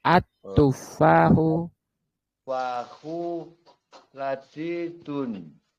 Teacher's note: al-nya enggak boleh bunyi. Al-nya masuk ke ta.